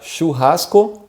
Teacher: you have this sh sound again in the beginning and you have this ha sound very strong in the middle of the word and the end is just o but in portuguese the o